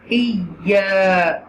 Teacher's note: read this ya with extra stress.